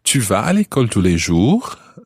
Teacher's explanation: To form the question, you could also just say, tu vas à l'école tous les jours? And raise your voice at the end.